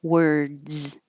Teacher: the plural looks like an S but sounds like a Z